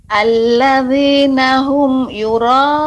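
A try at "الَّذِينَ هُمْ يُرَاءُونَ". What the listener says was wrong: Ya, Ibu, diusahakan tidak berjeda, dalam arti tidak ada berhenti ketika pengucapan dalam ayat. Allazina hum yura, tidak hum yura, ya, adanya jeda. Allazina hum yura, akan tapi menyambung, ya, tapi tetap jelas. Allazina hum yura. Kalaupun ada dia berhenti, hum you, ini jedahnya tidak ada terasa, agak lebih lama. Hum yura, nah itu kan tertahan, tapi tidak usah ditahan.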